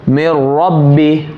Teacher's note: नून साकिन के बाद रा आया, मेर रब्बी, ये हुआ बिला गुन्ना जिसमें गुन्ना बिल्कुल नहीं होगा